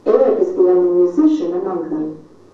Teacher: Musician, with stress on the middle syllable. Again, our voice must go up before it goes down.